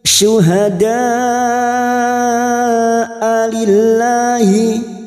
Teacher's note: diseret ya jangan dibaca syuhadaillahi ya tidak boleh diseret karena Hamza ini memiliki sifat yang tegas sifat syidah